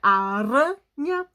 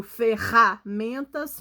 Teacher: Quando a gente pronuncia aranha, o som é na ponta da língua. E o ferramentas parece que sai lá da nossa garganta.